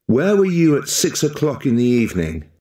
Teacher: If you are noticing, where were you, especially the 6 o'clock. The 6 o'clock is more stressed than the others.